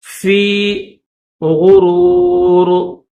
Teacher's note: غین کو موٹا کریں گے، را کو بھی موٹا کریں گے اور آخر میں جو یہ را ہے اس را کو بھی موٹا کریں گے۔